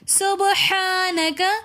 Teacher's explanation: ہا کے اوپر کھڑا زبر ہے تو اس لیے ہم ہا کو بھی ایک الف کی مقدار کھینچ کر پڑھیں گے۔ ہا کی ادائیگی میں خیال رکھنا ہے کہ ہا کو ہا کے ساتھ مکس نہ کر دیں۔